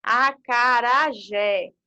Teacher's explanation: aqui dessa palavra é acentuada né zé é acarajé né então jé é a sílaba mais forte · Por exemplo, acarajé é sílaba tônica, é chamada de oxítona, porque a última sílaba é mais forte · Então, jé é a sílaba mais forte, no caso aqui vai receber acento.